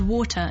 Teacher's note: in RP the T in the middle is clearly a t